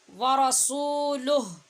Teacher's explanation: آخر سے ساکن ہا کی آواز آنی چاہیے